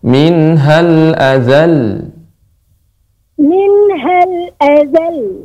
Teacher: nada ataupun suara lebih kita tinggikan dari yang sebelumnya